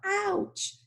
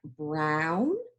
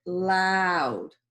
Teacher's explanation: If someone goes to pinch you, you go, ouch. So that ow sound, your mouth really becomes open. So you want to think of ow like brown for OW, or ow like loud.